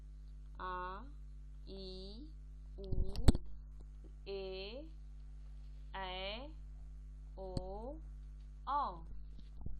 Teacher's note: इसके बाद है दीर्घ स्वर। इसके उच्चारण में ह्रस्व स्वर से दुगना समय लगता है